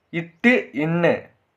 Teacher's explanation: நாவின் நுனி அன்னத்தின் நுனியை பொருந்துவதால் ஏற்படுவது